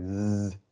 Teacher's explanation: If you hold your hand on your voice box and you say Z, you can hear it vibrating. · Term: voiced consonant